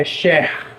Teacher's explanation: É um R que vem mais da garganta. Não tem muita relação com a língua. Não é um R retroflexo.